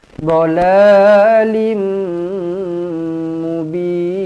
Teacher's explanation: Bin dibaca dengan panjang di sini, 2 atau 4 atau 6 harakat. · Hudan au fi dhalalim mubin. Tanwin bertemu dengan mim sabdu, rapatkan terus bibir, dengungkan dua harakat.